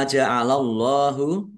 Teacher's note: Ma ja'alallahu mim fathah alif mat tabi'i panjang dua harokat. Allahnya dibaca tebal karena harokat di depannya fathah.